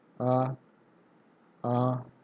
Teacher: अनुनासिक के आधार पर जिन स्वरों के उच्चारण में, जिन स्वरों के उच्चारण में हवा जो है कहाँ से निकलती है, हवा नाक और मुंह दोनों से निकल रही है, तो उसको क्या बोलते हैं, अनुनासिक स्वर कहते हैं